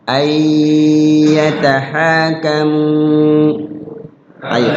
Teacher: Jadi nggak boleh terburu-buru di ya-nya itu, harus ada gunnah. Ya, cara menggunakannya itu ya ditahan di situ, agak lama, sekurang-kurangnya 2 ketukan. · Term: idgham bi gunnah